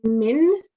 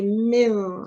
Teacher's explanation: you have to say min, which is very clear noon, or if you have to do an ikhfa, which means a partial nasalization of the noon. And in the case of ikhfa, we say mil rather than min.